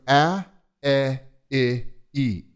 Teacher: in this family of vowels the tongue is forward and moves forward on each subsequent more narrow vowel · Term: forward vowels